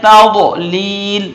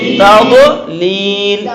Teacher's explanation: پھر لام کے نیچے یا آ گئی حروف مدہ میں سے، تو یہ لام کو ایک الف کے برابر کھینچیں گے